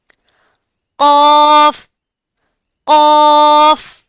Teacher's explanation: हठों को गोल करने से बचाना है और आवाज को नाक में लेकर नहीं जाना। · जुबान की जड़ ऊपर के नरम तालों से लगेगी तो कौफ अदा होगा। इसकी अदायगी के वक्त मुंह भर कर पढ़ेंगे।